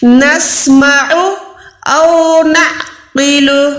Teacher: عین حلق کے درمیان سے، اور یہ او جو ہے وہ حلق کے نیچے والے حصے سے